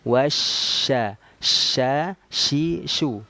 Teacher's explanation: karena makhraj huruf shin itu keluarnya dari tengah lidah, bukan dua bibir.